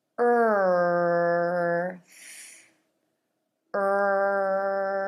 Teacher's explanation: the tip of the tongue goes from being pulled back and up for the r to coming between the teeth for the th